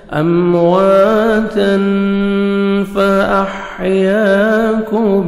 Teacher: تنوین کے بعد 15 لیٹرز میں سے فا ہے، آپ نے نوز میں ساؤنڈ لے کے جانا ہے